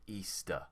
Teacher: easter also finishes with the schwa sound